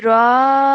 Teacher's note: we have to stretch the Ra sound out for 4 seconds because of the Madul Kabir, joining on the D sound at the end, and then stretching out because of the Ya Mad